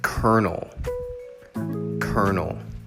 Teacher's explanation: the emphasis is on the cur part